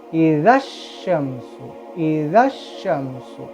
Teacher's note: یہ اس صورت میں ہوگا جب الف سے پہلے کوئی وہ لیٹر نہ ہو تو اشمسو کر کے پڑھیں گے، مگر یہاں الف سے پہلے زال آ گیا، اذا آ گیا، تو اب ہم نہ الف کو پڑھیں گے نہ ہی لام کو، اب اس کو ڈائریکٹ زال سے شین کو ملا لیں گے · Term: حروف شمسیہ